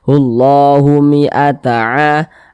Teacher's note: berdiri atau Alif kecil yang berd di atas huruf sehingganya ini dibaca panjang Mad thobii panjang dua harakat